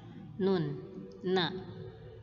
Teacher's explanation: Ujung lidah ketemu gusi gigi seri atas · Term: huruf nun